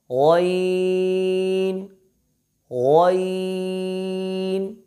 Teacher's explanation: اس میں صرف پہلے حرف غین کو ہم نے پر پڑھنا ہے، باقی کو ہم نے باریک پڑھنا ہے